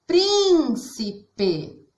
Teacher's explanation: São 3 sílabas, mas a sílaba prim nós falamos mais forte. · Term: sílaba tônica